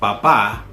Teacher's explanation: papá, that's father or dad, with the accent on the last A.